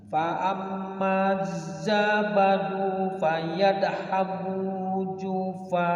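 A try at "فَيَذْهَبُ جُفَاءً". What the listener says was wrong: Iya, jadi A-nya panjang. Namanya mad iwad itu. Jufaan, jufa. Pokoknya setiap hamzah fathatain kalau waqaf panjang 2 harokat. Namanya mad iwad.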